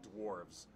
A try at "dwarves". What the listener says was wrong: There's a W in there. It's dwarves, not dwarves.